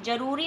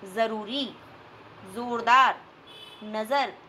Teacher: तो ये उर्दू भाषा का वर्ण है, इसका उच्चारण हिंदी के वर्ण ज से अलग है। ज को बोलते समय जीभ ऊपर वाले दांतों से थोड़ा ऊपर हल्का सा छूती है और हल्की सी सीटी सुनाई देती है